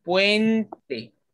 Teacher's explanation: en la primera sílaba ocurre un diptongo, tenemos una vocal cerrada y una vocal abierta, U, E, puente.